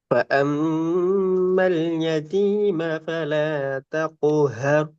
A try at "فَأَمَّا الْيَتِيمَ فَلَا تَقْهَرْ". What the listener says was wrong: ஆ sound வரல. ஹர் எண்டப்பல ஹர் இந்த இர் என்ற வல்லினமான உச்சரிப்பு வரைக்கும் வாங்க. இந்த ரெண்டு இர்ரும் தொண்டையில நடுப்பக்கத்துக்கு நாக்கு வரலையே. எர் எர் அந்த முன்னுக்கு தான் வருது, வரையில. இர் வளைஞ்சு வரணும். ஹேர் தென் ஹேர் இந்த இர் ரெண்டு வளைஞ்சு வந்தா தான் அந்த சவுண்ட் வரும்.